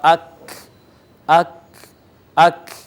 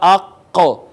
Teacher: قاف کے مخرج سے ذرا منہ کی جانب ہٹ کر اور ہونٹوں کو پیچھے کی جانب کھینچ کر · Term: کاف